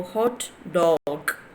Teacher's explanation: You are raising your voice, and you are stressing DOG.